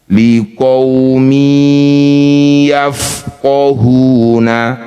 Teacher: Kasr tanwinnya masukkan pada huruf ya. Dengungkan dua harakat. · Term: idgham bighunah